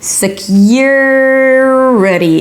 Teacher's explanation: you want to combine the Y and the R - Y'R - to connect them.